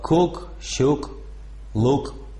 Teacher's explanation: Короткое «у» без движения губ употребляется в словах.